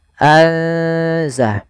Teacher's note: Dan sedangkan ikhfa di antara keduanya, sehingga nunnya samarkan ke zai. Azah. Atau biasa lebih mudah untuk memperingatnya pakai ng atau ang gitu ya.